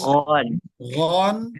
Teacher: ketika fathatain jangan biasakan Gan atau Khan Harus Gon